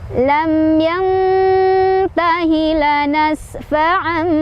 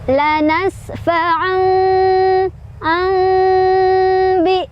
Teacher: Nah, tanwin itu kan dia huruf nun juga, cuman hanya dalam bentuk bunyi ya. Jadi kita tukar bunyi n-nya menjadi bunyi em. Ini juga sambil berdengung ya, sambil ditahan juga. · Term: iqlab